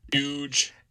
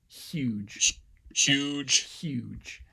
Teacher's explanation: So that's, and that looks more like a sibilant because I'm still getting that sort of obstacle turbulence at the back of my upper row of teeth. Similar to what we get for a sh, but just further back, right? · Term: palatal fricative